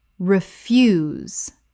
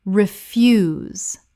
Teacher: Refuse, the noun, rubbish. Refuse, stress on first syllable. Refuse, the verb, to decline. Refuse, stress on second syllable.